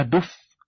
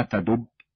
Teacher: فالفاء حرف احتكاكي والباء حرف الانفجار مع ان كليهما يخرج من بين الشفتين